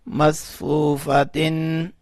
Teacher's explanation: میم صا زبر مس، فا وو پیش فو، مسفو، فا زبر فا، مصفوفا، تا دو زیر تن، مصفوفاتن. تا کے نیچے جو دو زیریں ہیں اس میں جو نون کی آواز آ رہی ہے اس کو ہم نے واضح کر کے پڑھا